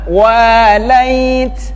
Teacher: Wa panjang 2 harakat, mad tabi'i